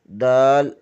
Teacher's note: زبان کی نوک ثنائے علیہ کی جڑ سے لگے تو دال ادا ہوتا ہے